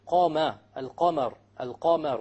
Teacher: Therefore, when we say qama, al-qamar, al-qamar, we notice there's a difference between the fatha of the qaf and the fatha of the mim. The fatha of the qaf is heavier because the qaf is of the letters of tafkhim.